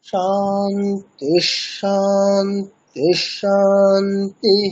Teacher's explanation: শেষের শান্তি শব্দের ওখানে স্কেলটা উপরের দিকে উঠবে, প্রথম দুটি শান্তি শব্দের শেষে স্কেলটা নিচের দিকে, মানে অনুদাত্ত, শেষেরটা উদাত্ত।